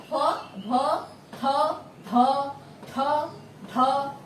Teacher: আর সময় বেশি লাগে বলে ফ, ভ, থ, ধ, ঠ, ঢ এগুলো হচ্ছে মহাপ্রাণ ধ্বনি।